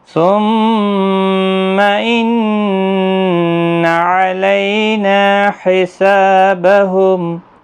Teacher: لئی یالین ہے، نا الف مدہ ہے، سا الف مدہ ہے، دونوں کو 1 الف کی مقدار کے برابر کھینچیں · بہم میم ساکن ہی رہے گا وقف کی صورت میں